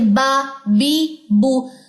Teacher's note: دونوں ہونٹوں کی انوالومنٹ ہے